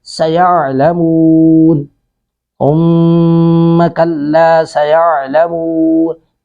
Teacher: سیعلمون سین پر سٹی کی آواز آئے گی ، سیعلمون، کلا سیعلمون، ہا کو نرمی سے ادا کریں گے،